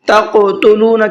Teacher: تقتلون کے قاف میں قلقلہ کرنا ہے، اس لیے کہ قاف حروف قلقلہ میں سے ہے اور اس کے اوپر جزم بھی ہے۔